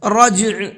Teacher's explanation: جیم کے اندر قلقلہ کریں گے اور عین کو ساکن کر کے پڑھیں گے